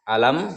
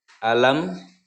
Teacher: Nah, cara membacanya itu dibaca jelas. Alam, mimnya jelas terbaca dan bibirnya tertutup karena mim itu makhraj hurufnya adalah syafatain ya, 2 bibir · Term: idhar safawi